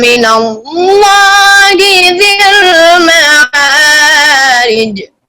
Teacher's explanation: جب من اللہ میں اللہ کا نام آیا ہے نا تو آواز میں آپ آواز کو اوپر لے گئے ہیں، یعنی اس میں عظمت ہے اللہ کے نام کی۔